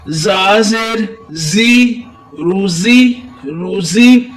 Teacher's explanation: زا کے نیچے جو ہے زیر ہے تو اس کو زا کو سیٹی کی تھوڑی سی آواز دیں گے